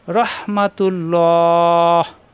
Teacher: তুল্লাহ ল হবে এবং তিন আলিফ টান হবে